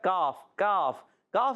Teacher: کاف ادا ہوتا ہے زبان کی جڑ تالو کا سخت حصہ